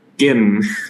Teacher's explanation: in Cairo, they say gim, not gym